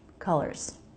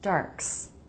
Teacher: Ending Z sounds are weak and they usually sound like a really weak S.